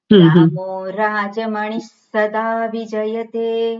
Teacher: વિસર્ગ પછી સકાર છે એટલે વિસર્ગનો અડધો સકાર બોલવાનો.